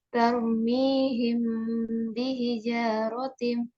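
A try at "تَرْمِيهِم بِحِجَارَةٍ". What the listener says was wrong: Baik, lanjut.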